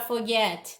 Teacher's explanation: Olha a palavra forget, tem 2 sílabas. Olha a última sílaba, get, a mais forte, forget. Então, termina com CVC.